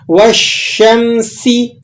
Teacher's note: سین بھی حروف صفیریہ میں سے ہے، اس میں بھی سیٹی آپ نے ادا کرنی ہے